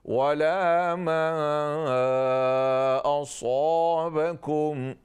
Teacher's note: साद full mouth, उसके बाद अलिफ भी फुल माउथ से